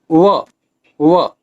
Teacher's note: दंत्योष्ठ वर्ण का उच्चारण स्थान दांत और ओठ है। इसके अंतर्गत व वकारस्य दंतोष्ठम, व व्यंजन आता है।